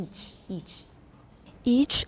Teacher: almost everybody says itch in taiwan it's each it's long e